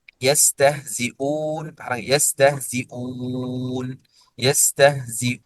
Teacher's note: مد البدل. فورش يمده زيادة، يمده زيادة، له في ذلك حركتين أو أربع أو ست